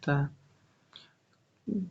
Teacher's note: दंत व अल्पप्राण अघोष वर्ण का उदाहरण है त